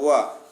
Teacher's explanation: यही एक ऐसा वर्ण है जिसका दंतोष्ठ के साथ उच्चारण होता है